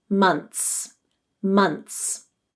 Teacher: many native speakers will drop the th sound because it occurs between a consonant and a final s in order to make their speech more fluent months months you